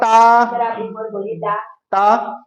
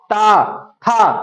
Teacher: जैसे था बोलोगे तो जो जीभ है वो ऊपर वाले में लग जाएगी, दांत में लगती है।